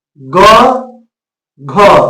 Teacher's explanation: तो क में कम वायु निकलती है जबकि ख में जो है मुंह से अधिक वायु निकलती है।